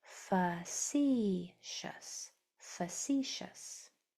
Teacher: But if that helps, that's how those three syllables are broken up. And the second syllable is accented.